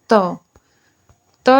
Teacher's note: त त जो है वह दंत्य व्यंजन है